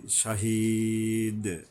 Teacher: জালিকা লা শাহিদ, শাহ, এই যে শিন আসছে এখানে, শাহিদ, এখানে ওই যে ইয়ার উপরে তিন আলি পরিমাণ টেনে থামতে হবে, জেরের বামে ইয়া সাকিন।